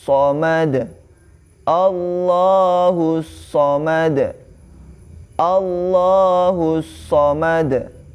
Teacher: huruf lamnya itu walaupun di situ di mushaf Madinah itu tidak ada alif kecil, maka di huruf lamnya itu tetap dibaca 2 harokat